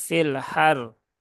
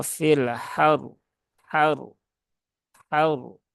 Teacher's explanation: Padahal di sini ada tasdidnya. Nah, maka pastikan tasdidnya tidak hilang dan roknya juga harus terbaca dengan tebal ya. Karena dia roknya berhubungan dengan harokat fathah. · Nah, maka pastikan tasdidnya tidak hilang dan roknya juga harus terbaca dengan tebal ya. Karena dia roknya berhubungan dengan harokat fathah. Maka roknya harus dibaca dengan tebal, yaitu dengan cara fil haur, haur.